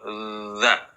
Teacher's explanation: Ketika mengucapkan huruf dha, nafas jangan keluar, tetapi apa? Ditahan. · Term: jahr